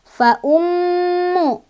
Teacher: Fa ummu. Ini ada gunnah karena ada mim bertasydid. Cara bacanya adalah didengungkan dan dengungannya ditahan 2, 3 atau 4.